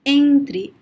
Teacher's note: nasal and sound which is also a little bit closed but it is clearly nasal okay you have the air passing through your mouth and nose at the same time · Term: nasal sound